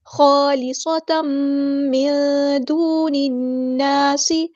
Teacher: تا کے اوپر 2 زبر، 2 زبر، 2 زیر اور 2 پیش کو تنوین کہتے ہیں۔ تنوین کے بعد کیا دیکھیں گے ہم، حرف میم ہے تو یہاں پر ہوگا ادغام مع الغنہ، خالصۃ من دون الناس، نون ساکن کی آواز کو یہاں ہم چھپا دیں گے، من اور اخفا کرتے ہوئے ایک الف کے برابر رکتے بھی ہیں۔